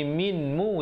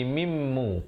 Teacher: Jangan pula kita baca faman qafa mim musin, mim musin, tak betul, dia kena mim dengungkan di situ. Asalnya bunyi minmu, tapi di sini kena bunyi mimmu kerana nun tu terus masuk dia dalam mim yang bersabdu. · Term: idgham bi gunnah